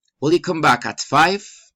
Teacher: alternative questions rising and falling intonation